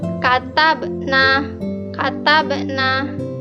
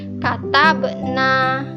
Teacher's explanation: Harus dipantulkan karena ada huruf qalqalah di tengah-tengah kalimat yang sukun.